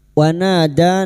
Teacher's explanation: na fathah diikuti alif 2 harakat kita panjangkan